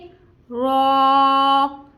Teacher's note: जबान की नोक और मुकाबिल के तालु कहाँ से है कि जहाँ से हमारे ऊपर के दांतों की जड़ है, जड़ से थोड़े से पीछे वाला हिस्सा जो है वो मुकाबिल का तालु है। रॉ को भी हमने एक अलिफ की मिकदार के बराबर खींच के अदा करना है